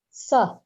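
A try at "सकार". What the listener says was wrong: Sakara. You have to say Sakara, not Sa.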